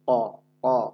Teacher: আর কফ, এটা আবার মোটা আওয়াজে জিহ্বার গোড়া থেকে উচ্চারণ করতে হবে। ক, ক। কফের একটা ধাক্কা আছে, এই ধাক্কাটা না দিলে আবার কফ কিন্তু ইজি হবে না। · কফের একটা ধাক্কা আছে, এই ধাক্কাটা না দিলে আবার কফ কিন্তু ইজি হবে না। এই জন্য কফের নিজস্ব যে ধাক্কা আছে সেই ধাক্কাটা ইনশাল্লাহ দিতে হবে।